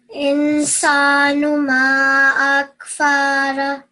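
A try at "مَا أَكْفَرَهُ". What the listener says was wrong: Again, over here, so this fa, it was a bit too long. It was more than 1 second. Ma akfarah.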